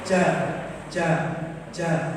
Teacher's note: ujung lidah itu nampaknya bukan ke bawah tapi ke atas ja ja nah itu nempelnya ke atas ya lidah yang makanya lidah yang tengah atau lidah yang bagian depan ini nempelnya jangan ke atas.